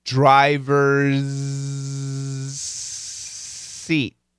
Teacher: but this is a z sound this is an S sound these sounds are going to blend together and there's a little bit of Z but a lot of s